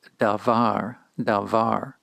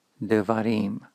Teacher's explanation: When we move from the singular form to the plural, devarim, we add a syllable to the end, the im, plural syllable. Notice how the first syllable has reduced when a new final syllable was added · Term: pretonic reduction, propretonic reduction